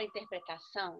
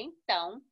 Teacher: na letra A, em ambos os casos, o som foi anasalado.